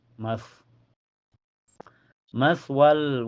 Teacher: Sa sukun mutlak dan makhraj sa itu torfulisan ma'atrof asanaya al-ula. Jadi ujung lidah nempel ke ujung gigi seri atasnya.